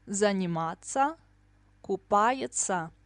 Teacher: Т мягкий знак СЯ, Т СЯ we pronounce as ца, always.